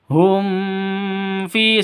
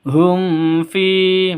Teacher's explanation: hum fi langsung ya, jangan didengungkan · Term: izhar safawi